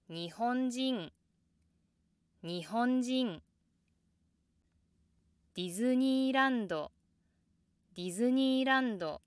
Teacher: After the downstep, you don't necessarily have to come down to the exact same pitch where you started. The low pitch after the downstep is often lower than the initial low pitch, but it depends on the intonation.